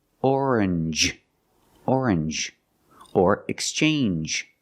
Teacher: you make the n Sound not the nasal sound just n and the J like juice JJ together orange orange or exchange change or exchange you have